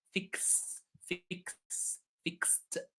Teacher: So S, there is no vibration. So the ed is pronounced t.